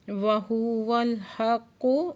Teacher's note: کاف مشدد ہے، سختی سے پڑھیں گے، اور کاف حروف مستعلیہ میں سے بھی ہے، پورا آواز سے پڑھیں گے